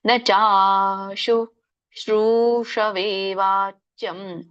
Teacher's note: ಶ್ರೂ ಎಳಿಬೇಕು, ಎರಡನೇ ಶ್ರೂನ.